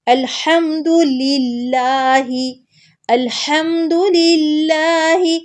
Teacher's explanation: حمد، ہا کو حلق کے درمیان سے نکالیں گے، اور دال پہ پیش ہے، اس کو بالکل لمبا نہیں کرنا. الحمد نہیں کہنا بلکہ فوراً سے الحمد للہ.